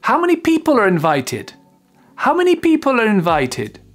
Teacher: L'intonation descend et on arrive au grave à la fin.